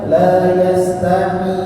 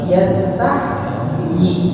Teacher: Ketika sukun dialirkan terus suaranya itu baru masuk ke dalam huruf ya.